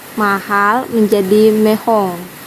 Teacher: mengalami penguatan atau ketegangan vokal karena bunyi E dan O sama-sama tegang pengucapan vokalnya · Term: penguatan vokal